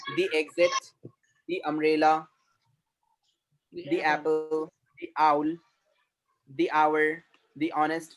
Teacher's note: You can say the with a longer sound like me